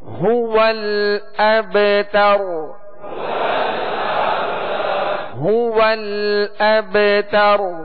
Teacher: ہاں کا جو پیش ہے اس کو کامل ادا کریں گے. ہو، اس کو کھینچیں گے نہیں، ہو نہیں پڑھیں گے بلکہ هو الابتر.